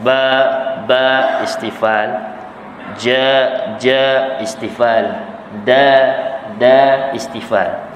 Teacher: 3 huruf lagi, iaitu ba, jim, dal, iaitu martabat yang lemah kerana 3 itu ada sifat istifal ataupun huruf istifal. Dia tidak terangkat, pangkal lidah dia tidak terangkat.